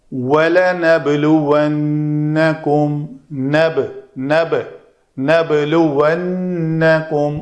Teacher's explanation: یہ واو کے لیے شفتیں دونوں ہونٹ گول ہونے چاہیے